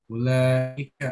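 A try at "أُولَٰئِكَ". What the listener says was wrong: Ulaika panjang sebetulnya. Tetapi kalau yang ulaika itu nggak bisa 2 harokat, nggak bisa, nggak boleh.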